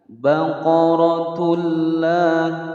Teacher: Baqaratullah ada dhammatain bertemu dengan huruf lam. Cara membacanya adalah dengan masuk ke huruf lam tanpa didengungkan. Ini adalah hukum bacaan idgham bila gunnah, masuk tanpa didengungkan.